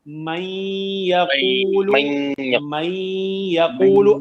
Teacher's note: نون جو ہے نا اس کی آواز تو مخرج سے باقی نہیں رہتی, لیکن اس نون ساکن کی وجہ سے جب آپ اس کو یا میں داخل کر دیں گے تو پھر ایک غنہ ہوگا جو باقی رہے گا, کیونکہ نون کی پراپرٹی کیا ہے, نون کی کریکٹرسٹک صفت کیا ہے کہ اس میں غنہ پایا جاتا ہے.